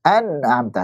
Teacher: Ada gunnahnya nggak? Ada itu. Hanya tidak dipanjangkan gunnahnya. Nah, namanya aslul gunnah.